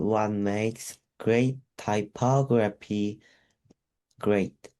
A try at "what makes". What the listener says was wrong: About what makes가 아니고 what makes 해봐. What makes. What Yeah, what makes. One makes라고 발음하면 안 돼. What makes.